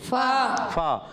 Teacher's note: فا کا مخرج اوپر والے دانتوں کے کنارے نیچے والے ہونٹ کے تر حصے سے لگتے ہیں تو ادا ہوتا ہے فا